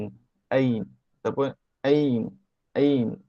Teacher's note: Ain tekan sikit kat tekak ni dekat pertengahan kerongkong ni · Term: huruf Ain